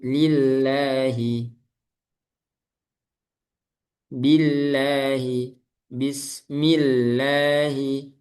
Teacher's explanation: huruf sebelum lafaz jalal Allah itu berharokat kasroh maka lamnya dibaca tipis